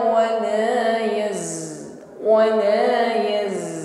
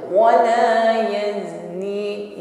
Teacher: ada desis yang tipis bunyinya tajam yang mengalir di antara ujung lidah dan gigi seri bawah. Jangan sampai mengucapkan zai ini tidak ada bunyi sofirnya atau bunyi desisnya, bukan wala yazni sofirnya tidak ada, wala yaznin. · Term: sifat safir